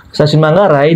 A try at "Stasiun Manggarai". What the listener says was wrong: Pertama, yang ngasih terburu-buru pengucapan stasiun. Stasiun Manggarai. Nggak usah terlalu terburu-buru, tapi juga jangan terlalu santai.